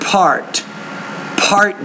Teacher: make sure you pronounce that p with a little more air